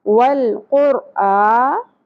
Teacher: حمزہ کے اوپر کھڑی زبر ہے، تو یہاں پر ہم اس کو 1 الف کے برابر کھینچیں گے